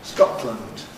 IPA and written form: ˈskɒʔtlənd (Scotland)